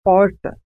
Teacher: há um movimento de retroflexão da língua em direção ao fundo da boca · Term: R retroflexo